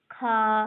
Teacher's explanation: खा महाप्राण अघोष प्रकार का व्यंजन है।